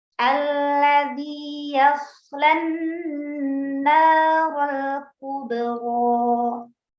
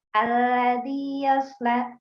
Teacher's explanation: huruf shad sukun itu justru lebih jelas lagi ya, sifat sofirnya, lalu hamesnya, begitu, lalu rokhawahnya, itu harus disempurnakan.